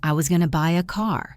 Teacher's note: Try to make the word buy and the word car louder and longer.